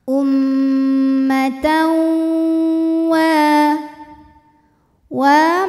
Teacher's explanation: ada hukum idgham bhunah karena ada tanwin fathah menghadapi huruf wau maka bunyi tanwin ini dileburkan atau dimasukkan ke wau disertai bunyi dengungan